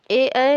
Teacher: ए को कंठ प्लस तालव्य से बोला जाता है।